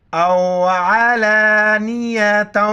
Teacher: عین کو گلے سے کریں گے،